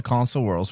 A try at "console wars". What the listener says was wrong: It sounds like you're saying consoles. Console